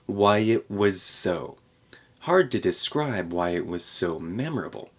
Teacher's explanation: it was was why it was so then we're going to connect the s in so with the Z in the word before it